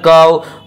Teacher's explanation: واو لین کو نرم آواز کے ساتھ جلد پڑھیں گے، تھوڑا بھی نہ کھینچیں ، معروف پڑھیں، مجہول آواز سے بچیں، ان اعطیناک الکو، فا